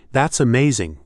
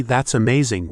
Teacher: If I say, That's amazing, with a high, excited intonation, you know I'm genuinely impressed. But if I say, That's amazing, with a flat, low intonation, it might sound sarcastic